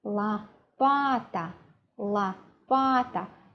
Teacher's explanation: now we have a feminine noun with three syllables now the stress is not on the last syllable it is in the middle